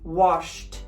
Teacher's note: Hear that t sound? That's because the sh is voiceless.